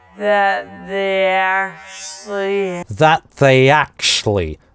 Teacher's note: That здесь гортанная смычка, that they actually, а they actually она произносит слитно.